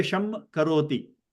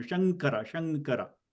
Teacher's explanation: You pronounce anuswara because you can see that your lips are closing, pronouncing Sham. · when you're saying the name Śāṅkara, okay, your lips don't close at all because the anuswara change into nga sound.